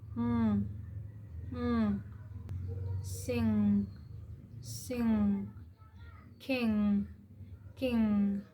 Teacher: the velar nasal, commonly known as the ng sound, where the back of the tongue touches the soft palate. It never starts English words.